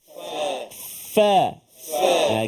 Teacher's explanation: Jadi gigi kita ni kena pada perut bibir bawah. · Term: huruf fa